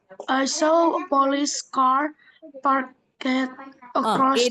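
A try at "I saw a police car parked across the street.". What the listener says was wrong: Ide-nya nggak pernah bunyi. Park across. Jadi ed nggak pernah bunyi ed. Jadi bacanya bukan parked, tapi park. Park across the street. Park across the street.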